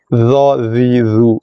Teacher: Cuma bezanya dha sifatnya itibak dan istilak, angkat tengah lidah, angkat pangkal lidah, tebal pada dha.